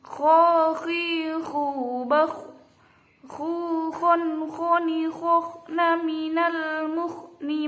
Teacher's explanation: Makhrajnya kho ada di puncak tenggorokan · kho itu termasuk huruf isti'la. Jadi harus dibaca tebal, dalam artian lain harus mencucu. Kho gitu. Harus mencucu dan biasanya dibaca moncong ya. · Kho tidak boleh ha, tidak boleh. Harus kho mencucu, tebal, dan ada seperti ngorok kho gitu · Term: huruf kho